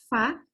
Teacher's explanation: kita bibir dalam bagian bawah kita naikin ketemu gigi bagian atas